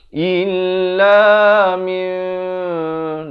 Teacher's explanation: Apa yang ditukar? Bunyi nun kepada bunyi mim. Jadi kita tukar bunyi nun itu daripada min jadi mim. Tapi jangan lupa panjangkan dua harakat. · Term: iqlab